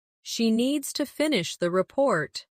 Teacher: stress needs and report and let the small words fall quietly